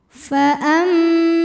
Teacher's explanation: Bismillahirrahmanirrahim faamma di sini ada hukum ghunah musyaddadah karena mim bertasydid cara bacanya didengungkan bunyi m-nya tahan sampai ada suara masuk hidung kurang lebih dua harakat